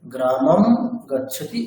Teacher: সংস্কৃতে অনুস্বারের উচ্চারণ সাধারণত মকারের ন্যায় হয়ে থাকে। যেমন গ্রামং গচ্ছতি, এটি উচ্চারিত হয় গ্রামম গচ্ছতি এরকম।